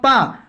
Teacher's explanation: आप बिना ओठ चलाए आप पा को नहीं बोल सकते, यानी ये ओष्ठ से बोला जाता है।